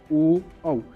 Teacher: ओ कहाँ से आवाज़ आ रही है? ओष्ठ और कंठ से। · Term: ओष्ठ प्लस कंठ